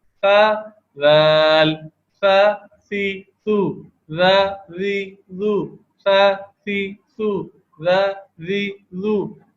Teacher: یہ موٹے نہیں پڑے جاتے. اس میں دیکھیں نا زبان میں کرو ہے اور نہ ہی حلق تنگ ہے. تو یہ زبان کی نوک اوپر سامنے کے جو دو دانت ہے ثنایا اولیہ اس کے کنارے پہ زبان کی نوک لگتی ہے. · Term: سادے حروف